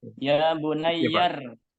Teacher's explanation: Jadi alifnya itu enggak dibaca, langsung ke ra sukun.